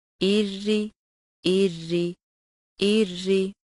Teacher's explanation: अगर रॉ के नीचे ज़ेर हो तो रॉ बारीक पढ़ी जाती है